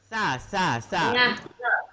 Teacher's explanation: Kalau sa makhraj sa, Ujung lidah di gigi atas. Antara gigi atas.